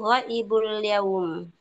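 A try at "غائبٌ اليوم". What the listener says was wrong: Nah, ghaibun kalau mau disambung ghaibunil. Betul.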